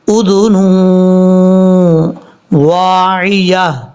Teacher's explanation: اور آگے بھاری ساؤنڈ والی ہا ہے وَتَعِيَهَا اُذُنٌ وَاعِيَةٌ، یہاں پر نون کو واو سے ملاتے ہوئے دو پیش کی تنوین کے بعد جب بھی واو آ جائے تو وہاں پہ غنہ کیا جاتا ہے